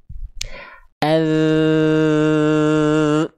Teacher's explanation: ujung lidah nempel ke ujung gigi dari atas tipis-tipis mengalir suaranya dengan jelas. Contoh az tuh ketika dia nempel suaranya enggak berhenti. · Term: rakhawah